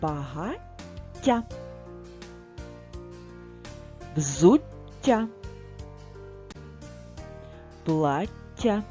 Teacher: дві букви Т написані в слові ми читаємо трохи подовжено і м'яко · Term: подовжений приголосний ть